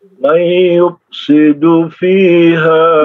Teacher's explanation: Idgham bi gunnah ya. Idgham bi gunnah, sehingga ditahan 2 harokat.